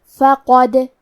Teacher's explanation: قلقلہ کا معنی ہے حرف ساکن کو ہلانا، تو ہم حرف دال کو ہلاتے ہوئے یہ کلمہ کو پڑھیں گے